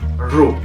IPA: ɹ